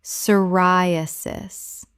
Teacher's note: The p is completely silent. Four syllables with stress on the second.